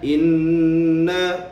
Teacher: Terdapat nun yang bertanda syaddah. Jadi di situ perlu kita dengung dua harakat.